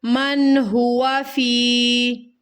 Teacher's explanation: اظہار کے معنی ہے ظاہر کرنا. ٹھیک ہے، یہاں پر ہمیں نون کی آواز کو ظاہر کرنا ہے. من غنہ نہیں ہوگا، لمبا نہیں کرنا اس لفظ کو.